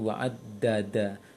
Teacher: Dal punya sifat jahar, kan itu dal jangan ada anginnya